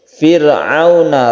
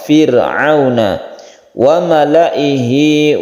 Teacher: ra-nya ini tipis karena sebelumnya ada kasrah